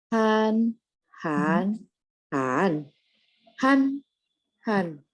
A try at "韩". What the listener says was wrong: Belum. Nada empatnya jangan naik. Jadi Han. Jadi belakangnya turun ya Bu ya. Han.